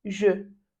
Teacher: Então vamos lá, você faz a boca de O e pronuncia a letra E. Então, je.